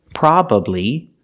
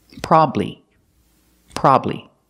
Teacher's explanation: so you can pronounce it with three syllables probably or you can pronounce it with two syllables